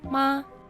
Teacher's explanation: ma with a constant high tone